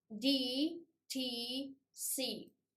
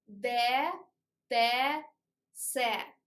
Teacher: In English, tip of the tongue goes up and tip of the tongue goes to alveolus. But in Russian, tip of the tongue goes to teeth and it looks down till in English it looks up.